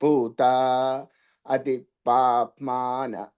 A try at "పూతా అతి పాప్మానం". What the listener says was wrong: అతి పైకి ఉందండి అతి ఉదాతం చెప్పాలి